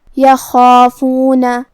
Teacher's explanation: خا کی ادائیگی حلق کے اوپر والے حصے سے ہے. خا حروف تفخیم میں سے بھی ہے تو ہمیں اسے بھاری آواز میں پڑھنا ہے جو کہ اس کے بعد مد الف ہے، اور مد الف اپنے پیچھے والے حرف کا حکم لیتا ہے تفخیم میں اور ترقیق میں. · خا حروف تفخیم میں سے بھی ہے تو ہمیں اسے بھاری آواز میں پڑھنا ہے جو کہ اس کے بعد مد الف ہے، اور مد الف اپنے پیچھے والے حرف کا حکم لیتا ہے تفخیم میں اور ترقیق میں. تو ہم خا کو اور مد الف کو دونوں کو بھاری آواز میں پڑھیں گے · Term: حرف الخا